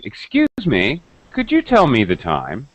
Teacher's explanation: when we're trying to be polite with a stranger we use that up and down intonation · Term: drop rise intonation